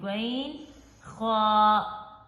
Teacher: شروع والے حصے سے ادا کریں گے غین، خا، غین، خا، یعنی کہ یہ خلق کا شروع والا حصہ ہے جو منہ کی طرف ہے، وہاں سے آواز آئے گی غین، خا۔ غین کو اور خا کو بھی پر پڑھیں گے، یعنی موٹا پڑھیں گے